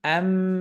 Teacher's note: নুন সুকুনের পর তো বা কিন্তু গুন্নার সময় আমরা মিমের দ্বারা পরিবর্তন করা বা এর উচ্চারণকে এই যে আমবিহুম অর্থাৎ ঠোঁটের অবস্থান কোথায় চলে যাবে বা এর